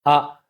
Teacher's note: आ हमज़ा के ऊपर ज़बर है, इसको हम एक अलिफ के बराबर बिल्कुल नहीं खींचेंगे इसको, आ बस इतना काफ़ी है।